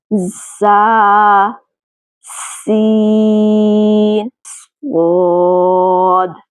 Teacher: जुबान की नोक जब सनाया सुफला से टकराने के साथ साथ सनाया उलिया के अंदरूनी किनारे से लगे तो ये हुरूफ अदा होते हैं। हमने नीचे और ऊपर के सामने वाले 4 दांतों को एक दूसरे के करीब लाकर जुबान की नोक को इन चारों दांतों के किनारे से लगाना है। · शुरू में जो की सीटी जैसी आवाज आ रही है यही इनकी खूबी है, जिसकी वजह से इन हुरूफ को हुरूफ सफ़ीरिया कहा जाता है।